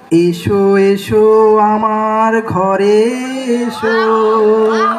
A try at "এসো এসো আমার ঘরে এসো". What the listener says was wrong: উচ্চারণটা কিন্তু ঠিক করবেন। শুনে মনে হচ্ছিল এসো এসো আমার ঘাড়ে এসো।